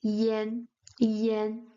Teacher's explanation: It's a slightly open A. It's way near to the A, but it still sounds Yen Yen.